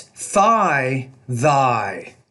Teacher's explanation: I'm contrasting the voiced and voiceless interdental consonant.